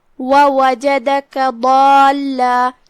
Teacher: ضاد کی ادائیگی زبان کی کروٹ اور اوپر کی داڑھوں کی جڑ سے ہے لہذا ہم ضاد کو وہیں سے پڑھیں گے.